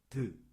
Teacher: 혀가 잇몸을 탁 치면서 소리를 막아요